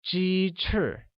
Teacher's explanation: chicken or 鸡 uses a high level tone and wings or 翅 uses a falling tone